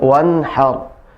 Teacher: Ketika ra-nya sukun, maka dia ra-nya ditebalkan.